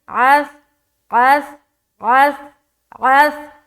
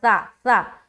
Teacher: زبان کی نوک کو ثنایا علیہ کے کنارے پر لگا کر منہ کو اوپن کرے تو اس طریقے سے حرف سا ادا ہوتا ہے